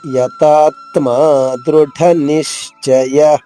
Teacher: 2వ చరణము యతాత్మా దృఢ నిశ్చయ. తాత్మ ముందు తా పైన ఆఘాతం ఉంది, దాని తర్వాత త్మాలోని మొదటి అక్షరం తా 2 తాలుగా చేసుకోవాలి.